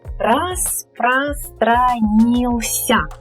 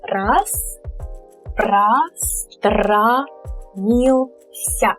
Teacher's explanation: the emphasis falls on the fourth one, on the fourth syllable. So these three are unstressed. · one O, which also sounds like a weak A because it's not stressed, it's an unstressed O